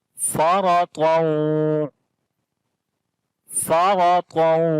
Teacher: را کو موٹا پڑھیں گے، اس کے اوپر زبر ہے، طا کو بھی موٹا پڑھیں گے، حروف استعلا میں سے ہے